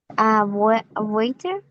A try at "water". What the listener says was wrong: No, porque no lleva esa. Sí, existe la palabra, pero esta nada más es water, porque no estamos haciendo como A. Estamos haciéndola como water.